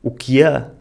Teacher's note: Nesta frase um pouco mais expressiva, vemos logo a forma particular dos sotaques do norte de dizer o quê, acrescentando um i e abrindo o e final